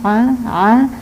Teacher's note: makhrajnya ain ditanggorokan dalam